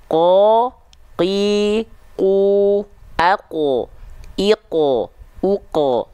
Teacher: lihat area yang berwarna ungu nah ujung lidah kita Tengah lidah nah pangkal lidah kita naik menempel ke langit-langit yang warna pink langit-langit yang lunak namanya · Huruf qaf itu dilafalkan dari aqsal lisan, dari pangkal lidah atau lidah terdalam kita. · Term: huruf qof